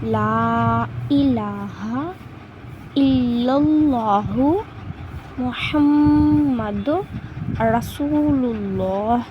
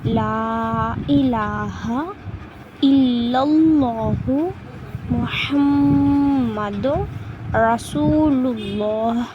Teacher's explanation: இந்த ரெண்டு அல்லாக்களும் வல்லினமாக வாய் நிரம்ப சொல்லணும்